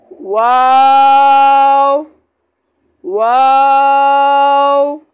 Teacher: वाव का मखरज है दोनों होठों की गोलाई से अदा होता है।